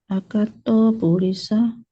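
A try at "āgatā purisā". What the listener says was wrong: Agata, it should be long A. Agata,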